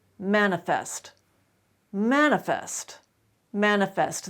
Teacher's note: the word manifest manifest manifest that is the only correct pronunciation you cannot reduce the e sound in that final syllable even though it is the final syllable and it's not accented